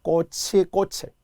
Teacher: 연음이니까요. 치읓 받침이 그대로 올라가야 되거든요.